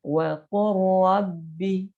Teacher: Ya, tidak dibaca waqul rabbi, tapi dibacanya waqur rabbi. Waqur rabbi langsung masuk ke huruf ra. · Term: idgham mutaqaribain